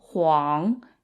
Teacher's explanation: the U in the middle is kind of like a w sound